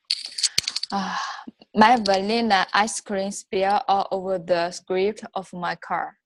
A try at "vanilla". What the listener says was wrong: So all of your L's were good except vanilla. You still say vanilla. Vanilla. Focus on la. Vanilla. If you have a difficult word and you know it's a difficult word, there's nothing wrong with, instead of saying my vanilla ice cream, no, my vanilla.